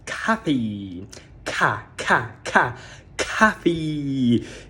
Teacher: Atenção, eu sei que na escrita você vê a letra O e você quer falar coffee ou coffee, mas a pronúncia não é nem com O nem com O. A pronúncia é com A. O A da palavra father. É um A e não um O